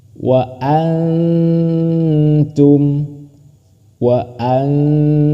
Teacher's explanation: Diingat, dihukumi ikhfa. Cara membacanya harus samar dan berdengung.